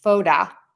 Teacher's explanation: But then I would say photo with the flap T.